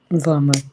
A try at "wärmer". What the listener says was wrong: Warmer oder wärmer? Mit dem Umlaut, genau.